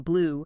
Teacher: That often indicates length in IPA. For you, your lips are definitely rounded, quite tense, almost like you're whistling. Tongue is high and back. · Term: long U sound